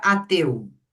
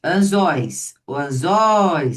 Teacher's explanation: tem o ditongo de som aberto, ele é tônico, né? Está numa oxítona, então ele recebe acento.